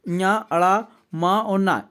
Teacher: ये सब के सब नाक की सहायता से बोले जाते हैं।